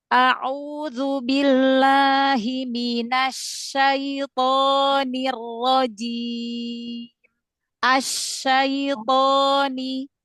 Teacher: Shin punya sifat hamas, punya sifat rokhawah.